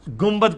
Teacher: نون ساکن کے بعد جب کبھی بھی با آ جائے تو وہ میم سے بدل جاتا ہے. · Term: اقلاب